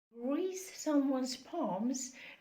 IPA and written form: griːs ˈsʌmwʌnz pɑːmz (grease someone’s palms)